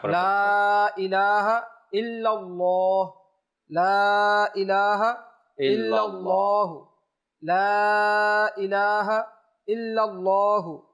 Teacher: আল্লাহ শব্দের লামটা এখানে মোটা হবে